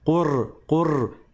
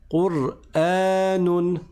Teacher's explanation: Normalement, on ne roule pas le ra.